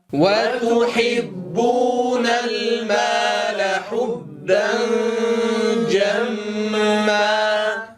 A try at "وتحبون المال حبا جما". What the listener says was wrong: لا نقول حبا جما، حبا جا. لا نقول حبا. ضممنا الشفتين في غير موضع ضم. حبا جما.